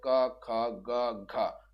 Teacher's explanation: कंठ से उच्चारण होता है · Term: क वर्ग